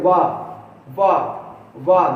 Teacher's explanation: दांत और ओंठ दोनों इसमें मिलते हैं। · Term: दंतोष्ठ